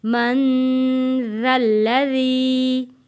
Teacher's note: نون کے اوپر غنہ ادا کریں گے، نون ساکن ہے